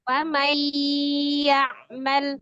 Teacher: Bi dengan gunna dengung, jadi dengan dengung. Maka tadinya faman ya dibaca famai. Ditahan, ditekan dua rokat. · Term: idgham bi gunnah